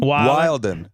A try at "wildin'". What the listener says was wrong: wildin', There's no There's no D in it. There's no D in it. Yeah, wildin'.